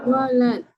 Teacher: pastikan dha tu panjangnya lebih daripada lin atau sama panjang. · dha 6, lin baca 4. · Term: mad lazim